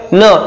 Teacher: अनुनासिक तर आपल्याला माहिती आहे, लक्षात येतं, नाकातून याचा आवाज येतोय आणि यांचा उच्चार जो आहे तो न सारखा होतोय